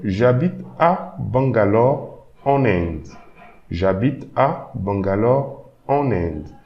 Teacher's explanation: when I'm pronouncing en Inde, you can hear that there is an extra N. So this is also the liaison phenomenon.